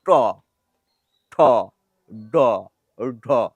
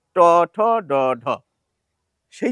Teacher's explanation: মূর্ধা হাতে গিয়ে স্পর্শ করে বলার চেষ্টা করছি এতে কি হয় আমার জীবটিকে বেশ বাঁকিয়ে নিয়ে উপরে গিয়ে স্পর্শ করতে হচ্ছে